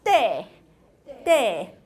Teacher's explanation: You start high and you do a falling. · It's transcribed as 5-1. It's a high falling.